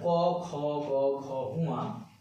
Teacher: উচ্চারণ স্থান হচ্ছে কণ্ঠ, কারণ গলা দিয়ে উচ্চারণ হয়। কণ্ঠ থেকে ক উচ্চারণ করো, খ উচ্চারণ করো, দেখো এই স্থানটা বেশি কাঁপছে, মানে এই কণ্ঠ থেকে উচ্চারিত হয়। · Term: কণ্ঠবর্ণ